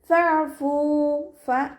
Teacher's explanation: ഫഅഫു light ആക്കിയിട്ട് ഉച്ചരിക്കുക. മഖ്റജ് വരുന്നത് നമ്മുടെ മേലെ മുൻപല്ലിൻ്റെ അറ്റവും താഴെ ചുണ്ടിൻ്റെ ഉൾവശത്ത് നനഞ്ഞ ഭാഗവും ചേർന്നിട്ടാണ്. സൗണ്ടിനെ ലൈറ്റ് ആക്കിയിട്ട് ഉച്ചരിക്കുക കേട്ടോ.